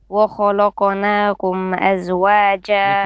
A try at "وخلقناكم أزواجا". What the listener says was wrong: Make your lam flat. وخلقناكم أزواجا. Qaf is heavy. Okay, Kha is heavy, Qaf is heavy, only the lam is flat. وخلقناكم أزواجا. This is not lak, okay? خلقناكم.